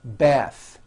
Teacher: The word bath is a noun with an unvoiced TH.